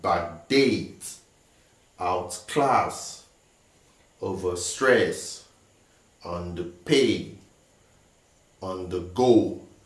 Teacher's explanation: So all these words, we have the stress on the second syllable or the second word of the compound word. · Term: verb compound words